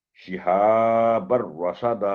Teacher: تو یہاں بھی شہابن نہیں ہوگا، تنوین کی آواز نہیں آئے گی کہ را پر تشدید ہے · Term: ادغام کامل